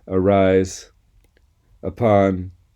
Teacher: This is the schwa, a common sound in English, which some people may have a hard time with. It's at the beginning of the words arise, upon